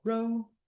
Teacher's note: ro is stressed, mio is unstressed.